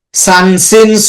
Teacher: জিব্বা নিচে রাখব নিচে দুই দাতের আগার দিকে লাগব পুরাপুরি লাগবে না কিন্তু লাগার মত থাকবে